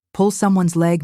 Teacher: Pronounce pull slightly stronger than leg for native feel.